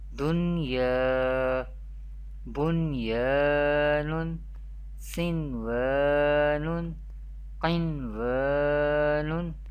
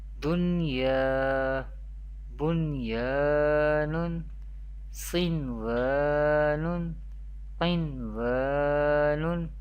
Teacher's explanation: We pronounce the Izhar-e Mutlaq rule in an Arabic accent without Gunna or without nasalization.